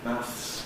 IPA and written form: mæθs (maths)